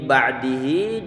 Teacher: Min ba'dihi wa antum zalimun. Ini ba'dihi difathahkan huruf ba'nya tipis, kemudian ain dia disukunkan.